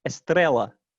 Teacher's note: there's a limit on what you can put in the onset in portuguese so they actually put a vowel before the s